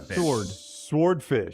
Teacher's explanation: Well, I mean, sword, the W is silent in sword.